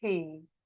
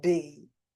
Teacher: P because it's unvoiced you cannot feel any movement here but B definitely you could feel movement